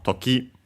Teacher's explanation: the accent on its own is on the ki, low, high.